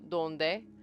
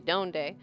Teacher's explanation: Donde? My tongue is right behind my teeth. But if I say it like with an American accent, I would say donde, and my tongue is on my alveolar ridge.